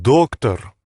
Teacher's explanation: the stress goes on that first o